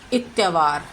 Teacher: इसमें शब्द के शुरुआती स्वर जो है आ का लोप हो गया है। लोप होना मतलब गायब हो जाना। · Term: स्वरलोप